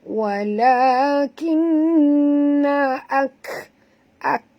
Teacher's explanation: huruf kaf sini bila mati kena bunyikan hamasnya. Ya, bukan bunyi dia ak.